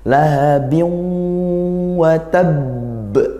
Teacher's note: Nah, selain itu gunnah itu bukan hanya masalah dengung, tapi makhrajnya gunnah adalah di hidung. Artinya baca masuk ke hidung. Meskipun ini waw, kalau nun jelas kita masuk.